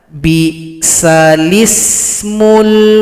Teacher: Ismu sedangkan di sini huruf lamnya sukun tapi karena ada naqal lam yang sukun berubah menjadi lam yang kasroh karena huruf hamzah sebelumnya berharakat kasrah dipindahkan barisnya atau harokat ke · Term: nakol